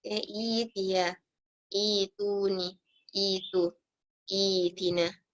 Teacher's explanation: Kita baca panjang for 2 bits. Jadi hamzah tu tukar jadi ya.